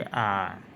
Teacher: जिन स्वरों के उच्चारण में मुख पूरा खुल जाए उसे विवृत स्वर कहते हैं।